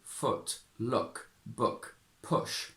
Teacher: in modern RP all these words have a U sound that is very similar to a schwa basically. So we say foot, look, book, push, and it turns out, and I didn't know, that this is a more central placement in the mouth here, whereas the traditional RP version is U. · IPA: /ʊ/